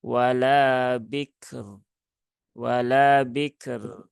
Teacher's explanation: konsepnya adalah bertemu dengan harakat kasrh yaitu ba yang kasrh maka rnya dibaca dengan tarqiq ya dengan tipis ya bukan tebal bukan tafkim · Seperti itu ya untuk ditunaikan sifat dari kaf dan juga huruf roknya ya wala bikr. Nah, jadi syiddah dari kaf tunaikan, tawasud dari rok ditunaikan dan roknya dibaca tipis